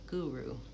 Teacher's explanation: So same vowel for both of those u's, but they're the vowel u, guru. First syllable stress. So that one's lengthened. Gu and ru is shortened.